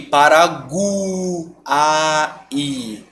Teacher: esse encontro vocálico que tem 3 vogais e eles ficaram na mesma sílaba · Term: tritongo